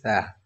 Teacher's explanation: اوپر اور نیچے والے دانتوں کے درمیان سے آپ کی زبان تھوڑا سی پھنس جاتی ہے